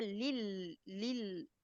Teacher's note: लाम की जेर नीचे को आवाज जाए लेल नहीं हो